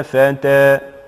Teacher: الألف فيها تقرأ بماذا؟ بالإمالة الصغرى في حالة الوقف